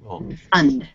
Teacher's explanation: If you are talking about a verb, I'm going to refund the money, then the stress is on the last part of the word.